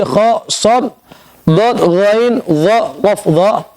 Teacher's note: ketika kita melafazkan huruf isti'la, huruf yang 7 khussa dhaw tinqidh tadi, kha, shad, dad, ghain, dha, qaf, dha, lidah kita terangkat